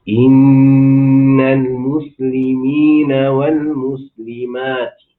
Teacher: Dengungkanlah nun, dengungkanlah mim dan nun yang bersabdu itu.